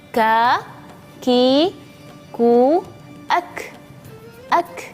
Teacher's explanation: Ketika huruf kaf ini sukun, maka ada suara hams. Hams itu seperti suara berdesir tapi yang sangat lembut sekali.